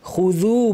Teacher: খুযু বলার সময় খু ভারী, জু পাতলা। অনেকের কিন্তু জু ভারী হয়ে যায়, অনেকে আউযু বলতে গিয়ে বলেন আউযু, জু এরকম বলেন।